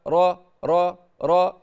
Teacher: حصل ان طرف اللسان التصق بفوق الثنيتين ثم رجع مره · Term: الراء, التكرير